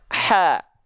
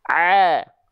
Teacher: Kalau ha kecil dia keluar nafas nama sifatnya hams ha kalau Ain itu enggak keluar nafas